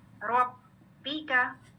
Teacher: ربی کا, ٹھیک ہے, یہ بھی با کی شد مارک کر لیں, دو با ہے. جب پہلی با ادا کریں آواز مخرج پہ بند ہو رہی ہے, پھر حرکت والی با ہے.